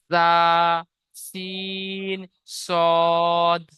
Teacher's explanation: জীবের আগা এবং সামনের উপরের এবং নিচের দুই দাঁতের আগার সাথে লাগিয়ে উচ্চারিত হয় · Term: 13 নম্বর মাখরাজ